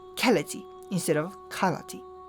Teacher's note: through the course of linguistic evolution, vowels were raised by subsequent high vowels. So high vowels refer to vowels like I or U, and that gives us keleti instead of kalati.